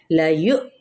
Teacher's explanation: واو کے اوپر جو حمزہ اور جزم کی علامات ہے یہاں پہ ہم جھٹکا دیں گے